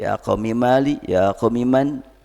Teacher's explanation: di sini ya Umi Mali ya Umi Man Mi di situ walaupun dibaca pendek seakan-akan mim bertemu dengan mim sebetulnya Enggak karena adanya kasrah memelihara adanya ya yang tidak dimunculkan